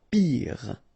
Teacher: Final E not pronounced, so R at the end.